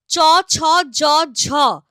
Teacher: এদের উচ্চারণ জীব আর তালুর স্পর্শের পর দুই এর মাঝখানে একটা ঘর্ষণ হয় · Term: ঘৃষ্ট ধ্বনি